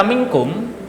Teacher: nun mati yang bertemu dengan huruf kaf, maka ini dinamakan ikhfa dan wajib dibaca samar